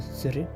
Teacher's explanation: Elle est fermée, postérieure et non arrondie.